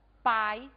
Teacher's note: encontramos na mesma sílaba o fonema vogal a mais o fonema semivogal um esse aí se encontro nós vamos chamar de ditongo ditongo